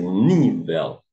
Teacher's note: então a sílaba tônica recai na penúltima esta é paroxítona